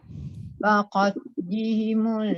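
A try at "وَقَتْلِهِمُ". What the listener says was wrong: Bunyikan angin sikit. Waqat. Bukan te. Kalau te dia jadi qalqalah. Waqat. Angin je. Waqat.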